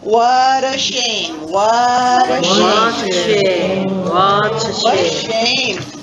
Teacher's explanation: Again, be careful with the T. That should be a flap T.